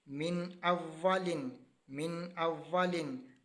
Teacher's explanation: اب نون ساکن کے بعد پھر حمزہ آ گیا، اس لیے ہم نے یہاں پر اظہار کیا، غنہ نہیں کیا